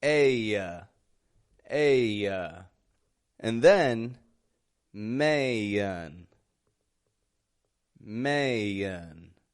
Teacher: So aya, you see the wide A, it's modified when followed by an N or an M. The wide A changes from the ah that we hear in back to an aya sound. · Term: American twang